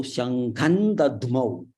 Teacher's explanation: So Anuswara followed by Da. So it is the Tavarga. The fifth letter is Na.